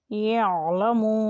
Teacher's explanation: یہ بھی حرف مدہ ہے، اسے بھی کھینچ کر ادا کریں